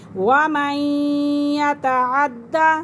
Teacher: عین کو پڑھیں گے، حمزہ کی آواز نہیں نکالیں گے